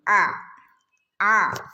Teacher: ഐന് നമ്മള് തൊണ്ടയുടെ നടുക്ക് നിന്നാണ് ആ ഐൻ വരുക